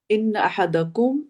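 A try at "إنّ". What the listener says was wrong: इन्ना, इन्ना, इन नहीं है, ठीक है, इन्ना अब दोबारा पढ़ा आपने, दुरुस्त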